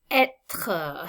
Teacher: You're going to hear that kind of strong sounding R in the second syllable.